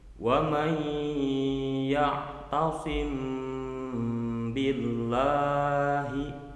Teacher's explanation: Disamarkan bunyi mimnya dan disertai dengan guna. · Contoh, wa may ya'tasim billahi, ya'tasim ada mim sukun, kemudian kedepannya billahi diawali dengan huruf ba, maka cara pelafalannya menjadi wa may ya'tasim billahi. Nah, mimnya itu diikhfakan, disamarkan, dan digunakan atau didengungkan. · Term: ikhfa safawi